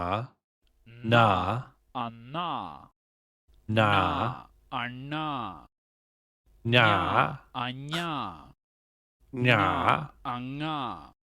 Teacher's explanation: You have to sort of vibrate your nose, I guess. Air is stopped in the oral cavity, but velum, soft palate, is lowered, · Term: Nasal